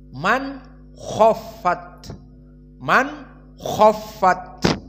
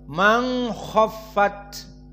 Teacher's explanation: Adapun qiraah Abu Jafar almadani berkesendirian ikhfa Nun iltaqom maakho maka tidak dibaca izhar Man khofat tetapi dibaca dengan Ikhfa Man khofat